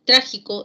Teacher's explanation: trágico es una palabra que recibe el acento en la ante penúltima sílaba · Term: esdrújulas